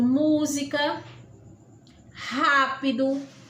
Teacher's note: palavras proparoxítonas são palavras que tem a antepenúltima sílaba a mais forte a mais intensa